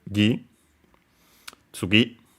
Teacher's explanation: tsugi on its own, by the way, accented on the gi.